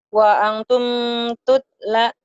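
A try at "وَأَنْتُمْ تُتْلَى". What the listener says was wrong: La-nya panjang ada kayak gini. Tumnya jangan ditahan idhar. Wa antum tutla.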